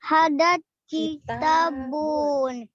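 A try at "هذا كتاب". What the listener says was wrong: Ya, bunyinya jangan panjang-panjang juga nanti. Jangan hada kitabun, jangan. Bunyinya cepet, hada kitabun gitu.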